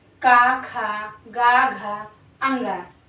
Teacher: जिन वर्णों का उच्चारण करने पर जीभ का पिछला हिस्सा हमारे कंठ को छूता है उसे कंठीय व्यंजन कहते हैं।